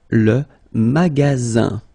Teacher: you've got only one S between two vowels. Then you get the sound Z